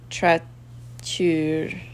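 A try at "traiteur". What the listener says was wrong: Why are you adding in R's?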